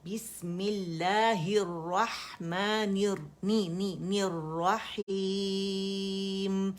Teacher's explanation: रा मुशद्दद है, उसको जमा देना बहुत ज़रूरी है और मोटा भी है